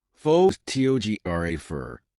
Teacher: For instance, in the word photograph, the stress is on the first syllable, pho to graph. But in photographer, the stress moves to the second syllable